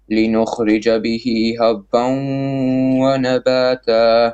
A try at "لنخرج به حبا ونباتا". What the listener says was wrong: لنخرج به حبا but middle throat. لنخرج به bottom throat به and then حبا ونباتا. Also some of your ikhfa is a little bit heavy. It's like for example وأنزلنا, you say وأنزلنا.